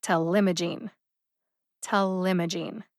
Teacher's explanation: the second syllable m gets the emphasis